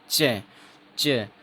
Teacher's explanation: जब आप च बोलोगे, बोलने जाओगे, उससे पहले जो एयर है वो कंप्लीट बंद हो जाएगी। और फिर जैसे भी आवाज़ निकलेगी च की, जैसे ही आवाज़ निकलेगी तो जो हवा है वो स्लोली स्लोली रिलीज होगी, स्लोली स्लोली बाहर निकलेगी। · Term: एफ्रिकेट्स